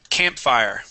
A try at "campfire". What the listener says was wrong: Okay, the accent goes at the beginning. Campfire.